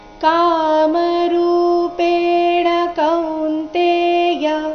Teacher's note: ಕಾಮರೂಪೇಣ ರು ಇಲ್ಲಿ ದೀರ್ಘ ಬರಬೇಕು